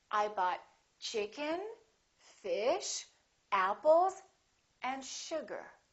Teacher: each of those items that you list should have a rising intonation